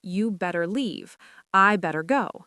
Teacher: in very casual street English, people drop the had entirely.